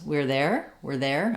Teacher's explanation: I'm not hearing any R sound any of the r sound I'm hearing were we're there the sounds kind of like were